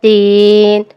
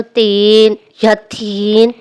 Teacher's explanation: دال میں سانس کم اور آواز زیادہ ہوتی ہے۔ مثال کے طور پر دین، اگر غلط پڑھا جائے یا تیزی سے پڑھا جائے تو تین یا تھین بھی بن سکتا ہے۔